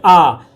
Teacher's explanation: तो देखिए पूरा जोर से मुंह खुलता है, ठीक है, हल्का नहीं खुलता, पूरा खुलता है। इसीलिए इसे क्या बोला गया, विकृत स्वर नाम दिया गया।